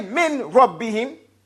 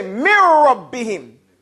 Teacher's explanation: If you put a noon next to a Ra, you do not hear the noon anymore. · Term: The noon disappears